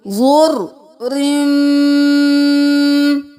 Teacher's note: اب یہاں پر ہم نے رن نہیں کیا، رو کو میم کے ساتھ ملایا کیونکہ میم پر تشدید ہے، تو میم پہ ہم دیر لگائیں گے۔ جب بھی میم مشدد ہوگا اس پہ دیر لگے گی، غنہ ہوگا۔ تو یہاں پر ہم کریں گے زر رم، رو کے ساتھ میم ملا دیا۔